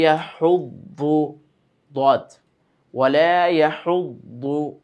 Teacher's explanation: দদের যে মাখরাজ ছিল জিহ্বার গোড়ার কিনারা মাড়ির দাঁতের সঙ্গে লাগিয়ে মোটা করে উচ্চারণ করতে হবে